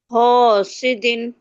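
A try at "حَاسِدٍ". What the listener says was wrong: थोड़ा जो ह कह रही है ना उस पे थोड़ा सा जोर दे, ह सी दिन।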